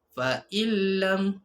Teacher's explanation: Cara bacaan dia adalah menggabungkan bunyi nun dengan huruf selepas nya tanpa dengung. Dia terus masukkan saja. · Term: idgham bila gunnah